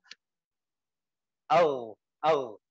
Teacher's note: tenggorokan yang atas tapi belum sampai yang paling atas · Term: gain